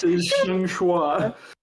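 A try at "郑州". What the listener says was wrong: Zhengzhou. And it's also less of a wa and more of a xia. Zhengsha. Xia. Not like qua, like kia.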